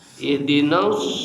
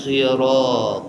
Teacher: nalika lisan bade maca sod maka ngadorong lamai jadi semu monyong